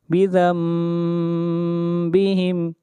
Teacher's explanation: فاعترفوا بذنبہم، بذنبہم، یہاں پر نون ساکن کے بعد با ہے، یہاں پر اقلاب کریں گے۔ بذنبہم، یہاں پر آپ دیکھ رہے ہیں لکھا ہوا نون ہے لیکن اس کو میم پڑھا جائے گا۔